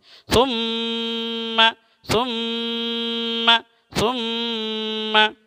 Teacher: ثا میم پیش ثم میم زبر ما ثم. دونوں ہونٹ کو بند کر دیں گے, آواز کو ناک میں لے جائیں گے. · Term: گننا